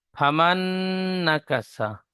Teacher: নুনের উপরে তাজদিদ এসেছে, নুন গুণনা করা ওয়াজিব, নাকে তুলে এক আলিফ পরিমাণ গুণনা করে পড়তে হয় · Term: ইদিয়ামে নাকিস